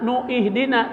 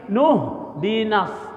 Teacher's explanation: Nah, hamzahnya dihilangkan. Jangan nu ihdina tapi nuh dinas ya.